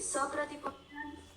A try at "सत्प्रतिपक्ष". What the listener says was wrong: not सत, सत, सत, सत, सत प्रतिपक्ष, not सप्रतिपक्ष, सत प्रतिपक्ष, then asiddha and badita, asiddha and badita.